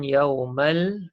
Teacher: Jadi lam tu dibaca dengan jelas dan terang, tidak ada dengung, izhar khamari.